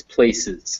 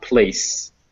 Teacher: remember when you say words like places, don't let your S's fuse together. You really want to make sure it's places, not place.